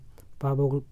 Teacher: और आप पा के जितने भी शब्द बोलेंगे कहीं ना कहीं दोनों आपके ओट्स जो होंगे मिलेंगे वहाँ पे, आप उससे भी बता सकेंगे। पा बोल के देखिए दोनों होठ क्या होंगे? मिल रहे होंगे।